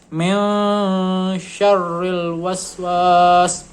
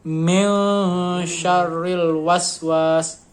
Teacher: Jadi minnya itu jadi bunyinya ng gitu. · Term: ikhfa